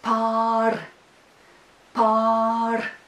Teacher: there is the long vowel ah in that syllable